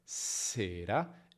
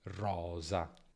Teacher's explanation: In s non c'è vibrazione, sera, e in z c'è vibrazione, rosa.